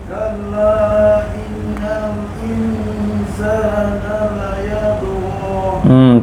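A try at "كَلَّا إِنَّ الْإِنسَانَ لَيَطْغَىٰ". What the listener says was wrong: Tak cukup. 4 harakat, 2 harakat.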